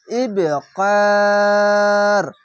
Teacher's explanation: শেষ অক্ষর সাকিন দিলে 1 2 3 তিনটি অক্ষর 3 আলিফ টেনে পড়বেন, মাধ্যে আরজি হবে